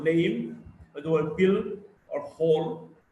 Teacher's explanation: L is a voiced alveolar lateral.